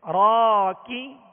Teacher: را کے ساتھ الف ہے، ایک الف کی مقدار کھینچیں گے اور را کو پر پڑھیں گے